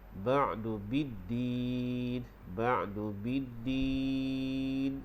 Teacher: diwaqafkan dengan hukum mad arif li sukun, kita panjang 6 harkat